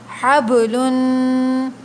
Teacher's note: ہا کو حلق کے درمیان سے ادا کریں گے